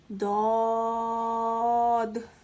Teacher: ضاد حرف مستعلیہ میں سے آتا ہے تو ہم اس کو پوری یعنی موٹا پڑھیں گے